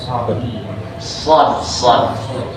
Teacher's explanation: ujung lidah ditempelin ke jangkar gigi depan dua ngambil sedikit kulit lelangitan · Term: shad